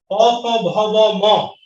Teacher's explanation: দুই ঠোঁটের স্পর্শে ঘর্ষণে ধাক্কা লেগে বের হয় বলে এটাকে বলবো আমরা উষ্ঠধ্বনি